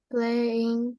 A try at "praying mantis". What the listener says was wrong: Pray. Praying. Not play. Not play. This is a pro. Praying.